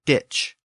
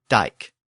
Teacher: ditch is the Old English version of the word with the CH sound, and dike is the Old Norse version with the original K sound